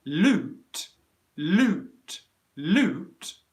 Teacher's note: you should be able to hear the ooh gets compressed and it becomes shorter